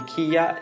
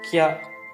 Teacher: And this basically happens when the first symbol, the original symbol, its sound gets like merged into the sound of the particle and shortened, and so instead of being kiya, it's kya. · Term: compound sounds